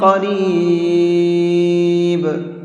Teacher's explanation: جب وقف کریں گے تو با ساکن ہو جائے گا، اور با حروف قلقلہ میں سے ہے، جب ساکن ہوتا ہے تو اس کے اندر قلقلہ کر کے پڑھتے ہیں